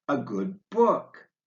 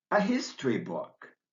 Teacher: the difference between adjective plus noun combinations like a good book in an adjective plus noun combination you put the stress on the noun and noun plus noun combinations like a history book in a noun plus noun combination you put the stress on the first